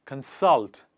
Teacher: called consult the focus is on the second part salt and we put the focus on the second part of the word and we say consult